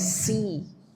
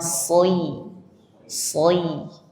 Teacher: Ya, tebal dulu baru ke i.